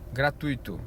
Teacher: onde o u é semivogal e o i é a vogal